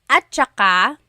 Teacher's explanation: technically it's spelled at saka, but when it's pronounced, remember the TS combination, it makes that ch sound.